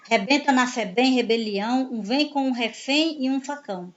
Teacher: são palavras em que a última sílaba vai ser a tônica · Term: palavras oxítonas